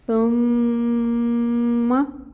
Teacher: پیش کی حرکت ہے دمہ 1 کاؤنٹ، میم مشدد ہے غنہ کریں گے، اس کی مقدار ہوگی غنہ کی 2 کاؤنٹس کے برابر، لیکن جو زبر کی حرکت ہے فتحہ ہے اس کو 1 حرکت کے برابر ہی ادا کریں گے، آپ اس کو لمبا نہیں کریں گے